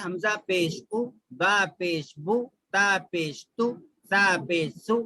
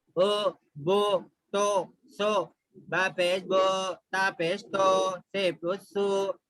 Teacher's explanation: پیش کو بھی جلدی پڑھنا ہے, تھوڑا بھی نہیں کھینچنا ہے, اور معروف پڑھنا ہے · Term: معروف آواز